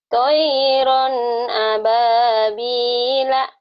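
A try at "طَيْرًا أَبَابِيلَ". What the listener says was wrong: Toiron. Toinya jangan panjang. Toiron. Toiron ababila. Gitu ya. Jangan toi. Jangan gituin.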